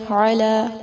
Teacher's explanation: عین وسط حلق سے ادا کریں گے، لام پر کھڑی زبر ہے، کھڑی زبر 2 حرکات جتنا لمبا کر کے اس کو ادا کیا جاتا ہے۔